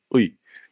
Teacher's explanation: That's a voiced pharyngeal constriction, literally just squeezing the throat muscles and root of the tongue